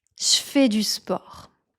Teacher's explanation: on a tendance à remplacer le son je par un son ch